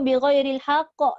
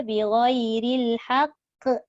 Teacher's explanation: Cuma bezanya ba itu diqalqalahkan dan nipis sebab dia bukan huruf isti'la. Ba itu huruf istifal.